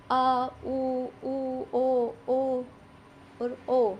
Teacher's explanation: ये जीभ के पिछले वाले भाग से बोले जाते हैं। पश्च स्वर।